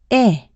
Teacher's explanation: it is produced by positioning the tongue forward and high in the mouth the jaw is in an almost closed position the corners of the mouth are pulled to the sides making